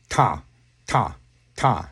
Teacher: So your voice, ah is a voice, and T is voiceless. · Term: voiceless teeth T